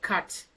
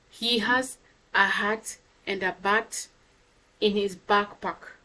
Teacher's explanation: you notice your lips do not go round, but they just spread and say the word cat.